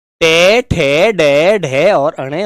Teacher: जिनकी आवाज मुख के मूर्धा भाग से निकलती है वो मूर्धा भाग होता है उसे मूर्धन्य कहते हैं।